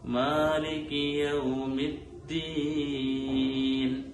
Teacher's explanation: മാ എന്നുള്ള മദ് അവിടെ അസ്ലിയായ മദ്ദാണ്. അതൊരിക്കലും ഒരു അലിഫിനേക്കാൾ കൂടുതൽ നീണ്ടുപോവാൻ പാടില്ല. അസ്ലിയായ മദ് പലപ്പോഴും നമ്മുടെ പല ആളുകളും ഓതുന്ന സമയത്ത് മാലികി യൗമിദ്ദീൻ ഇങ്ങനെ വരുമ്പോൾ അതിന്റെ അളവ് കൂടിപ്പോവുകയാണ്.